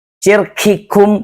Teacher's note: Syirkikum, berlebihan hamasnya. Syiddahnya jadi nggak ada.